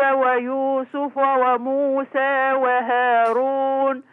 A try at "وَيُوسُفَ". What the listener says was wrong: كلام الله يفتح عليك انك فتحتي وقللتي، بس ليا ملاحظة صغيرة. لا ويوسف، الفاء ما بنتش الفتحة بتاعتها. يلا ويوسف.